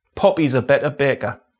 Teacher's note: Voiceless consonants are often glottalised, so for example in happy, the P sound involves a glottal stop and closing of the lips simultaneously.